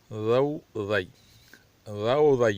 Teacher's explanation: زبان کو دونوں دانتوں سے تھوڑا باہر نکالنے ہلکا، اور زبان کے اوپر والے دانتوں سے چھونے نہ پائے، ٹچ ہونے نہ پائے، اور اس کو موٹا ادا کرنا پڑے گا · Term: زا کی مخرج